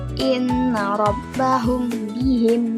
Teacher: Antara mim dan ba disamarkan bihim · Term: ikhfa syafawi